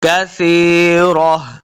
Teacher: جب وقف کریں گے تو اس کو ہا میں بدل دینا ہے، ہا کی آواز آئے گی، ساکن کریں گے، کثیرہ۔